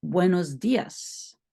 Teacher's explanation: l'ess en espagnol n'est pas aussi fort que l'ess en français